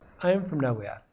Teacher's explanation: From becomes very short because it's not stressed in the sentence. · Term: weak form